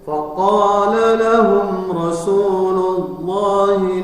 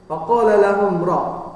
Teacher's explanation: Nah, di sini ada faqala lahum ra, mim sukun ketemu ra, maka dia izhar safawi, tidak ditahan. Kemudian Rasulullah adalah lafaz Allahnya tabkhim, Rasulullah tebal.